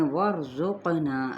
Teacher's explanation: را ساکن ما قبل فتح تو یہ بھی موٹا پڑھا جائے گا یعنی پر